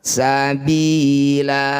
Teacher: Sabilan, fathah tanwin dihentikan disebut bacaan mad iwad. Bunyi fathah tanwinnya kita ganti jadi fathah panjang. Yang sangat perlu hati-hati, mad iwad itu panjangnya 2 harokat, tidak boleh lebih.